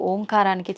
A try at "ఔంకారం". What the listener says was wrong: అది ఓంకారం కాదు, ఔంకారం. ఔం అని ఉచ్చరించినప్పుడు అకారము ఉకారము రెండూ పలకబడి మూకారం దీర్ఘమవుతుంది.